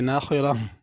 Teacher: ناخرہ خا کو بھی پر پڑھنا ہے، را کو بھی پر پڑھنا ہے، آخر میں ہا کی آواز آنی چاہیے، ناخرہ۔ ناخرہ اگر پڑھیں گے تو اس میں ہا ادا نہیں ہوگی۔